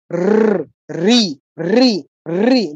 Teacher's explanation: র, রি, রি, রি, দেখুন তালু আর একটু পেছনে জিহ্বাটা কাঁপছে, বাড়ি বাড়ি দিচ্ছে, অনেকটা ভাইব্রেট হচ্ছে, এটাই হচ্ছে মূর্ধা। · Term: মূর্ধন্য বর্ণ